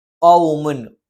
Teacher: ഖ നാവിന്റെ ആരംഭം മേലെ അണ്ണാക്കിലാണ്.